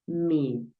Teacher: esta doble e la vas a pronunciar como una i, pero no es un solo golpe de i, vas a darle un poquito de continuidad a este sonido